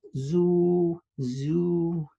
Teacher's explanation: remember that the plain vowel does not change, goes up or down, just stays the same.